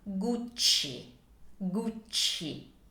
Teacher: So keep in mind that when you have a C followed by E or I in Italian, it's a soft sound, like in the word church. Also, this is a double C, so we have two C's, so you need to elongate it a little bit. So it sounds like this, Gucci.